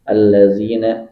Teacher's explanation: Nggak al tapi langsung masuk kepada ditasydidkan. Jadi lam pertama sukun, kemudian ketemu lam berharokat. Nah, digabungkan jadi lam berharokat tasydid. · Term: mutamatsilain